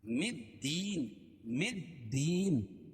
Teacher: مدین، مدین، یا ساکن سے پہلے زیر ہے اس لیے یا مدہ دال کے نیچے زیر ہے، یا مدہ اس کو ایک الف کے برابر کھینچ کے پڑھیں گے. اور وقف کی حالت میں یا مد عارض وقفی ہوگا.